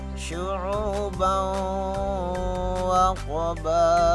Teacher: Ada tanwin atau fathain bertemu dengan huruf waw, maka hukum bacaannya idgham bi gunnah. Membacanya mendengung